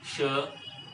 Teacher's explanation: इसका उच्चारण करना है तो जिह्वा हमारी तालू पर जाके टकराना चाहिए, जिह्वा का अग्र भाग तालू पर जाना चाहिए